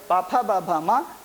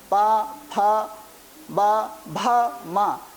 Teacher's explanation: जब हम पा बोलते हैं तो हमें अपने होठों को आपस में मिलाना पड़ता है। बिना हम होठों को मिलाए पा का उच्चारण नहीं कर सकते हैं, बिना होठों को मिलाए हम फा नहीं बोल सकते हैं। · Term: ओष्ठ वर्ण